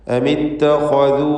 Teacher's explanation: ഇത്തഖദു ആലിഹ, ഇതിലുള്ള ദീർഘം, വാവിൻ്റെ ദീർഘം മദ് മുൻഫസിൽ ജായിസ് എന്നതാണ്. 4-5 ഹറക്കത്തിൻ്റെ അളവിൽ വാവിനെ ദീർഘിപ്പിക്കുക.